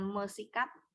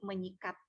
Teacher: bentuk dasar yang diawali dengan konsonan S itu biasanya luluh berubah menjadi nasal nyeh